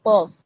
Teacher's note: জিহ্বার গোড়া তালুর সাথে লাগিয়ে মোটা করে উচ্চারিত হয় অফ।